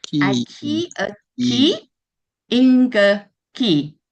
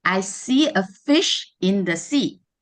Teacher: there's a replacement of the F with the K sound and also the omission of the sh sound in that.